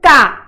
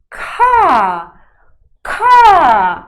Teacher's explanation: consoante k vai ter som de k só que é um k suave aspirado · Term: consoante aspirada